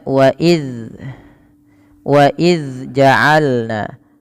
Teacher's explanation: Karena ujung lidahnya tidak pas sesuai dengan makhraj daripada makhraj huruf zal. Yang mana makhraj huruf zal ini adalah ujung lidah kita ya, ujung lidah menempel dengan gigi seri atas, sehingga wa iz ya, dia tertahan daripada nafasnya, tidak ada nafas yang dikeluarkan ya.